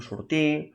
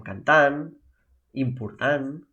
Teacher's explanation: la majoria de parlants catalans no pronuncien la R ni la T al final d'algunes paraules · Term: lletres mudes